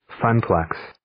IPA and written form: ˈfən-ˌpleks (Funplex)